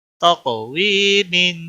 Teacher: قاف پہ قلقلہ ہوگا، یا مدہ ہے، ایک الف کے برابر کھینچنا ہے